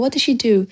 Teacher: What пен do'ды міндетті түрде естисіздер, себебі оларға екпін түсіп тұр. Олар анық естіледі.